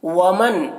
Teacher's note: ومن کے نون میں اظہار ہو رہا ہے تو اس نون کو جلد پڑھنا ہے